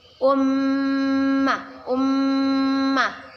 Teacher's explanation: mim bertasydid kita baca dengan berdengung dan ditahan dua horker Um macam Um kita sebut dengan gun gun nah